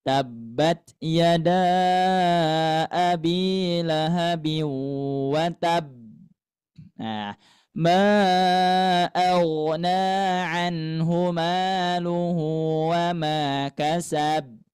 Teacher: tidak memantulkan huruf-huruf qalqalah